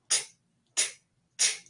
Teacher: The difference between these two sounds is that t is voiceless. That means you can whisper the sound, and also it's pronounced with a puff of air. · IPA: /t/